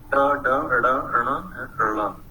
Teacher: Then we have a series of retroflex consonants, and Punjabi is the only Pakistani language which completes these 5 retroflex consonants. In Urdu we have only 3.